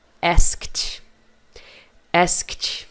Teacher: Você percebe que os meus sons finais são kt, kt. Não tem vogal, não tem kiti. É kt, asked.